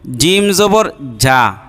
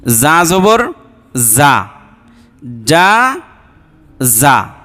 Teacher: জিমটা এই যে মানে মুখের যে মাঝখান থেকে উচ্চারিত হয়, কিন্তু জাটা মানে জিহ্বার আগা থেকে একটু সামনে থেকে